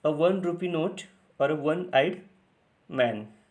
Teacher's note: one is pronounced with the W sound, that is W, which is also a consonant sound